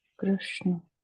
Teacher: So whereas the pure or the right way of pronouncing Krishna, Griha, Brihaspati is just R without the lips rounding or widening